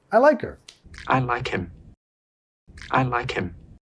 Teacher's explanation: Estamos bajando la H, comiendo la H y vinculando. No diciendo like her, más like her.